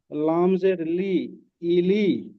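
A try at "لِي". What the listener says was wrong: লাম জের নয়, প্রথমে লাম খাড়া জবর আছে উপরে। লাম খাড়া জবর লা।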